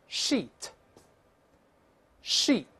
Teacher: 这是长音发一，这是拉一条线长长的、很细